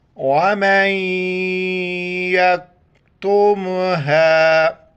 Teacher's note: میم کو یا کے ساتھ ملائیں گے بیچ میں نون کو نہیں پڑھیں گے اور نون کی وجہ سے یا کے اوپر جو ہے نا ناک میں آواز پیدا کریں گے